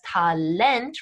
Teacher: english looking but pronounced differently such as talent right with that emphasis on the final syllable